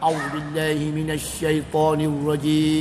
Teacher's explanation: suara paling bawah, nama dia qorar, untuk memulakan a'udzubillah ya. Harkat satu.